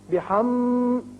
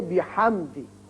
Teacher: آپ پڑھ چکے ہیں یہ قاعدہ میم ساکن کا، اس کے اظہار کا، کہ اگر میم اور با کے علاوہ باقی 26 حروف میں سے کوئی بھی میم ساکن کے بعد آ جائے تو یہاں میم پر اظہار ہوتا ہے. بحم یہ لمبا نہیں کریں گے بلکہ بحمدی میم کا اظہار ہوگا